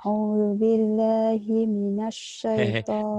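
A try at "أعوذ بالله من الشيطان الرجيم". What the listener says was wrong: Binya nggak kedengeran. A'udzu billah. Binya tuh dikedengerin. A'udzu bil. Bilnya nggak kedengeran. Binya nggak kedengeran.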